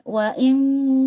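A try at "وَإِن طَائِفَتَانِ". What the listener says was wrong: Nah, jangan nempel, ngambang aja. Ujung lidahnya ngambang, jangan nempel. Diangkat tapi ngambang, jangan nempel.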